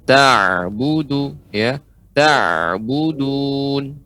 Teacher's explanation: ain ini dia tidak berhenti, akan tapi dia tetap mengalir tapi dengan lembut